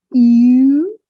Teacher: It's a very gentle progress from E to U.